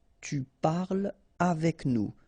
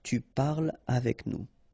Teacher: So no liaison here between parle and avec